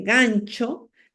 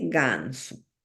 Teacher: la pérdida de africación, donde la palatal che es reemplazada por el fricativo s. Por ejemplo, en lugar de decirme gancho, me dice ganso.